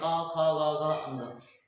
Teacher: क, ख, ग का उच्चारण जो है, सीधे कंठ से होता है, आप मुख खोल दो। आप सीधे सब कुछ बोल सकते हैं। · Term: कंठस्य वर्ण